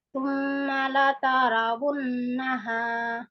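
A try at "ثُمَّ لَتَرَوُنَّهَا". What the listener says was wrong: Lataro. Lataro. nah, roknya tidak panjang, jadi cepat aja. Tsumma latarawun.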